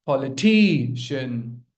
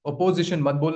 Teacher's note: Now the stress shifts from the second syllable to the third syllable.